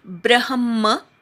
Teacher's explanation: ब्रह्म ब्रवर आघात, ब्र नंतर अर्धा ह म्हणायचा आणि म पूर्ण आहे. तिथे पोटात जो म लिहिलाय तो पूर्ण आहे.